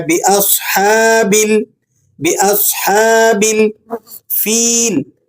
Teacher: لام قمری ہے تو لام کو آپ نے ظاہر کر کے پڑھنا ہے۔ باصحاب، باصحاب الفیل، فیل، فا پر کسرہ ہے، اس کے بعد یا ساکن ہے، یا ساکنہ ما قبل مکسور ہو تو ایسی یا کو یا مدہ کہا جاتا ہے، اسے صرف آپ نے ایک دو حرف کے برابر کھینچنا ہوتا ہے۔